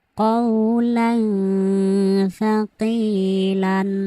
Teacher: তানবিনের পরে ইকফার হরফ তা আসার কারণে এখানে তানবিনকে গুন্নাহ সহ গোপন করে পড়েছি।